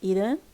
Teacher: It can be nasalized due to the influence of the na, which is a nasal consonant.